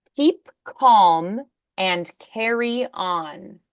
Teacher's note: the K is voiceless